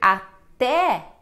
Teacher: é um E aberto, como eu costumo dizer